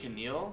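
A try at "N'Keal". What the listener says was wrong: It would be Keneal if the K came first.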